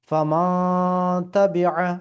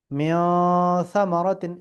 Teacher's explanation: এই নুনটাকে নাক দিয়ে উচ্চারণ হবে, হ্যাঁ, ইখফা করে পড়তে হবে